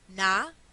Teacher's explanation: la elisión de D intervocálica entonces en lugar de decir nada dice na